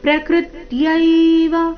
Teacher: ಪ್ರಕೃತ್ಯೈವ ಶಬ್ದದಲ್ಲಿ ಕ್ರ ಮೇಲೆ ಆಘಾತ ಬರಬೇಕು